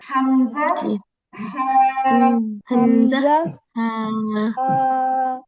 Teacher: এক নাম্বার মাখরাজ হলো কন্ঠনালীর নিম্ন ভাগ থেকে